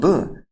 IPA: b